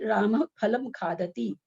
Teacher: फलम जो बोल रहे हैं उसके पहले प का हल्का सा उच्चारण आ रहा है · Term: उपधमानीय